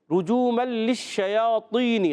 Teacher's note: رجوما للشیاطین، لام پر بھی تشدید، شین پر بھی تشدید، ذرا رک کر ادا کریں گے. شین جب ادا ہوتا ہے تو کیا ہوتا ہے؟ منہ میں آواز پھیلتی ہے